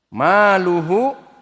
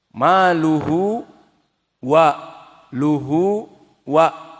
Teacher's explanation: maka maluhu di sini ada mad silah al-qasirah.